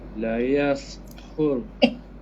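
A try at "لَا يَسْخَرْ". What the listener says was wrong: La panjang. La maksi.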